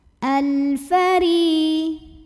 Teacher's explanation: Berikutnya ada alif lam qamariyah karena ada alif lam menghadapi huruf qamariyah yaitu fa, maka lam sukun dibaca jelas. Al-fari. Huruf ro dibunyikan secara tarqiq karena ro-nya berbaris kasrah, maka ro-nya dibaca dengan tipis.